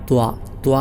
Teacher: ത്വാ നാവിന്റെ തല മേലെ മുൻപല്ലിന്റെ മുരട്ട് മുരട് ആ ഭാഗമാണ് അതോടൊപ്പം ത്വാ ഉച്ചരിക്കുമ്പോൾ തഫ്ഹീം തടുപ്പിച്ചു കൊണ്ട് ഉച്ചരിക്കണം അങ്ങനെയുള്ള ഒരു അവസ്ഥയിലാണ് ത്വാഇനെ